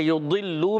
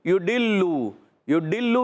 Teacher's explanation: ضاد کی ادائیگی ہوتی ہے زبان کی کروٹ، زبان کا بغلی کنارہ اوپر کی داڑھوں کی جڑ سے. زبان کی کروٹ بھی کہتے ہیں، بغلی کنارہ بھی کہتے ہیں، دونوں کہہ سکتے ہیں.